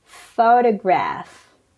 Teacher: First, the stress is on the first syllable.